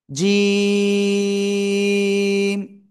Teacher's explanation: জিহ্বার মাঝখান বা মধ্যখান, তারপর আবার উপরে তালুর সাথে লাগাবেন, লাগিয়ে 1 2 3 আলিফ টেনে পড়বেন।